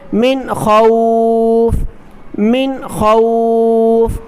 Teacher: خا بھی حروف حلقی میں سے ہے اور یہاں پر دیکھیں نون ساکن کے بعد خا ہے، اس لیے ہم نون ساکن پر غنہ نہیں کریں گے ، پڑھیں گے من خوف، بغیر غننے کے پڑھیں گے من